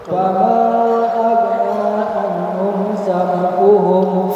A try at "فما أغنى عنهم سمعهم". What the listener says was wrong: Fama aghna. Jangan ada ge-nya, jangan.